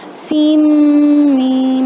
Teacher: تو اس کے علاوہ ہم نے سین کے تو سین میم میں سین میم ایسے کھینچ کر پڑھا تھا، سین کے نون ساکن کو ڈراپ کیا تھا اور سین کو میم سے ملا دیا تھا